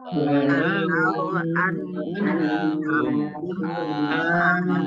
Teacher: Mim sukun bertemu dengan huruf alif idhar syafawi dibaca jelas.